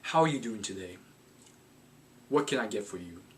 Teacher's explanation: when I said those things, I said them in a deeper voice. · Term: down talk